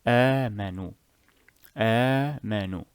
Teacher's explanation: You will not say آمنوا. No, it is only two harakas because it is a weak mad